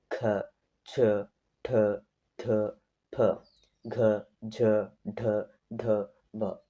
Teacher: ಹೆಚ್ಚು ಉಸಿರು ತಗೊಂಡು ಉಚ್ಚರಿಸುವ ಅಕ್ಷರಗಳೇ ಮಹಾಪ್ರಾಣಕ್ಷರಗಳು